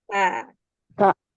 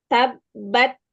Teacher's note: aliran udara pada nafas setelah suara tertahan pada makhraj saat menuturkan huruf syiddah dan juga dia hams, yaitu pada huruf kaf dan ta.